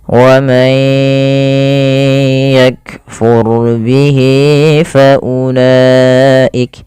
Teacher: rnya tebal karena di sini ro sukun didahului dengan fathah